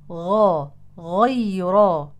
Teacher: ابدال الغين في كلمه غيره بالخاء همست الغين فتحولت الى خاء والصواب انحباس النفس مع الغين لانها مجهوره غير مهموسه